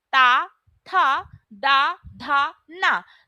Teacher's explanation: दंत जब हम बोलते हैं ता था द धा ना तो हमारी जो जीभ है वह हमारे दांतों को टच करती है